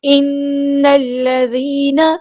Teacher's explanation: نون کو ہم لام کے ساتھ ملا دیں گے، حمزۃ الوصل ہمارا ڈراپ ہو جائے گا۔ زال باریک نرمی سے پڑھیں گے، یا مد آئی ہے تو مد اصلی کریں گے، اور نون کی زبر کو ہم لمبا نہیں کریں گے۔